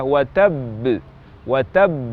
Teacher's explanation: berhenti di huruf ba misalnya waktu mengucapkan kata watabb watab maka ada jeda waktu untuk huruf ba yang pertama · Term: Qalqalah huruf bertasdid